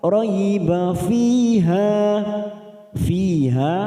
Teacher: fiha masing-masing 2 harokat kita panjangkan. Kasrah bertemu ya sukun, ha fathah diikuti alif. Kita waqaf pada tanda waqaf jaiz.